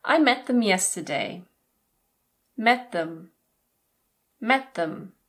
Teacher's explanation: Them is often reduced to /ðəm/ or even /əm/.